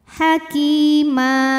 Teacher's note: Ya Sukun didahului baris kasrah maka huruf Kaf panjang dua harakat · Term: Mad thii